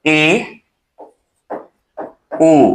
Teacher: अर्धसंवृत होता है ए, ओ, यानी आधा बंद